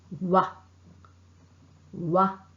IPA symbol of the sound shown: w